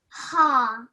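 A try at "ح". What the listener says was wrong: Yes, but it's a strong one. So try again. Ha.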